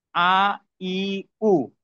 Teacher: কণ্ঠনালীর মাঝখান থেকে উচ্চারিত হয় দ্বিতীয় মাখরাজ আইন, হা। আইন জবর আ, আইনজের ই, আইন পেশ উ, আ ই উ।